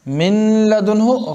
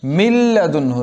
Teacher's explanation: नून को मुकम्मल तौर पे लाम पे बदल लेंगे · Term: इदगाम बिला गुन्ना